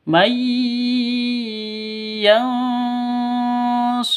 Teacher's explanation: Nun mati bertemu dengan ya. Cara bacanya itu masuk ke ya, mai, seperti itu, disertai dengung dua ketukan. Idgham bi gunnah.